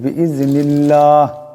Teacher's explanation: আল্লাহ লামের ডাইনে জের আছে আল্লাহ লামকে পাতলা আওয়াজে পড়তে হবে